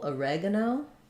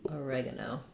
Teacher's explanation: we stress on the reg syllable oregano which means our o becomes more of a schwa